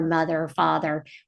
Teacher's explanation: It's a tongue biter. It's voice. It's a continuous sound. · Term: voice sound